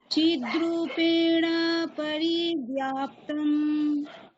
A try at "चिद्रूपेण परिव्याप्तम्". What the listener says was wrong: এখানে চিদ্রূপেণ, ওখানে নকারের পরে প রয়েছে সাক্ষাৎ, মানে ওখানে অকার রয়েছে, সুতরাং দীর্ঘ বললে হবে না। আপনি বলছেন চিদ্রূপেণ পরি, এরকম বলছেন, ঠিক আছে? তো সেরকম বললে হবে না। আরেকবার বলছি, চিদ্রূপেণ পরিব্যাপ্তম